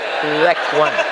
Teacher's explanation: Bukan za, pakai zal. Letakkan ujung lidah di gigi atas.